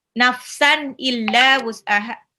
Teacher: nafsan tanwin ketemu alif izhar dibaca jelas